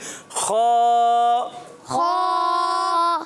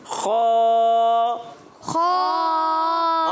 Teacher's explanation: हलक के ऊपर वाले हिस्से से